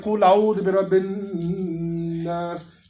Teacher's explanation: And the Ghunnah is if you hear people reciting like Qul a'udhu bi rabbin nas, that humming, that's called Ghunnah